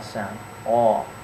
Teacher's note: it's produced when the back of your tongue is raised and the middle of your tongue kind of sinks down low